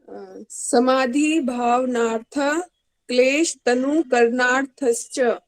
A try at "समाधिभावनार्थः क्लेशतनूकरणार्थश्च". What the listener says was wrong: एक बार देखो, ये समाधि नहीं कहा, समाधि ना कहा करो। मुझे लगता है, मुझे सुनने में ऐसा लग रहा है कि आप उसमें दीर्घिकार की आप उच्चारण कर रहे हैं, आप समाधि बोल रहे हैं, आप समय लगा रहे हैं धी बोलने में, आप तुरंत धी को